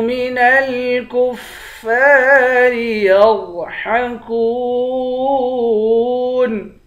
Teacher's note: کاف کو واو سے ملا کر ایک الف کی مقدار کھینچیں گے، واو حروف مدہ ہے